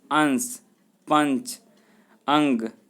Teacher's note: इसके उच्चारण से नाक से अधिक सांस निकलती है और मुख से कम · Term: अनुस्वार